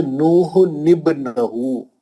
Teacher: تنوین کے بعد اگر حمزہ وصلی ہو اور اس کے بعد آنے والا حرف ساکن ہو تو تنوین کے نون کو زیر دیتے ہیں، کیونکہ حمزہ وصلی درمیان میں گر جاتا ہے. جیسے نوح نبنہو، اس نون کو نون خطنی کہتے ہیں.